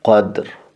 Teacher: قدر دې باندې قلقله کېږي. قلقله مطلب جټکه ورکوي.